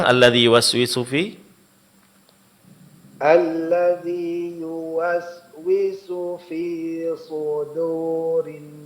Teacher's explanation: Kemudian terakhir pada kata fi suduri suduri di sini huruf dal itu dipertahankan tipisnya. Jangan terpengaruh oleh tebalnya huruf shad.